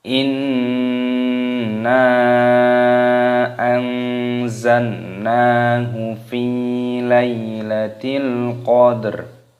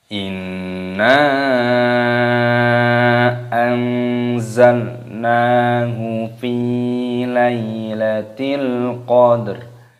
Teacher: Di sini terdapat nun tasdid, hukumnya dibaca gunnah, berdengung.